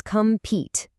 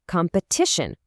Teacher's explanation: the long E sound becomes a short E sound